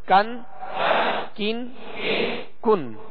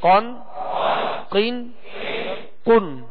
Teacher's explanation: کاف کو باریک ڈنڈی والا جو کاف ہوتا ہے اس کو باریک پڑھیں گے، اور اس سے آگے جو قاف ہے اس کو پر پڑھیں گے، موٹا پڑھیں گے، اس لیے کہ یہ حروف مستعلیہ میں سے ہے۔